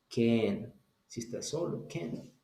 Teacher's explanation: si la palabra está sola, ahí sí voy a decir can como una E. Ahí sí lo voy a pronunciar así, can.